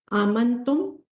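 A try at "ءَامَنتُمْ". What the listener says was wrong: सर खड़ी जबर है, 2 हरकत दे, आमंतुम।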